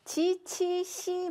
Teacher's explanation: 혀의 바닥이 넓게 펴지는 지, 치, 시 발음인데요